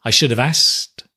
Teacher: Notice we often drop the K, right, as well, in asked